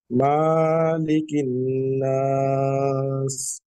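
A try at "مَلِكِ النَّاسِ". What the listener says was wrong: মালিকিন নাস, মালিক টান হবে না। মালিকিন নাস, টান নাই।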